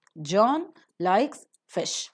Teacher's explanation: the utterance is made of three words and all the three words are stressed